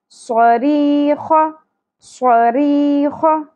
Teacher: دونوں میں سیٹی کا ایلیمنٹ کلیئر ہونا چاہیے. دونوں حروف صفیریہ ہیں، سیٹی کی آواز آئے گی · سین اور صاد میں ڈفرینس ہی یہی ہے کہ صاد پر پڑی جاتی ہے جبکہ سین باریک ہے. دونوں میں سیٹی کا ایلیمنٹ کلیئر ہونا چاہیے. · ری، زیر کے ساتھ یا ساکن حرف مدہ ایک الف کے برابر کھینچنا ہے. ری خ پر اور زبر شارٹ.